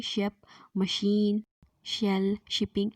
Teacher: In the production of sound sh, soft palate is raised to shut off the nasal passage and obstruction is caused by the blades of tongue touching the teeth ridge and front part of tongue is raised towards hard palate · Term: पैलेटोअल्वियोलर वॉइसलेस फ्रिकेटिव